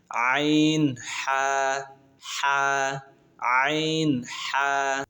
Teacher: দুই নাম্বার মাখরাজ হলকের মধ্যখান হইতে